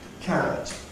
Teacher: word stress on the first syllable